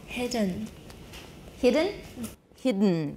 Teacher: nasals are syllabic at the end of the word when immediately after an obstruent